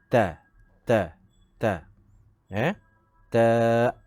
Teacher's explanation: Huruf ta hendaklah hujung lidah diletakkan di belakang gigi kapak, ya, bahagian atas, di antara gigi, sempadan di antara gigi kapak dan gusi.